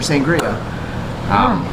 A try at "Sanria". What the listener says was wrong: So Sanria. it's just like without the G near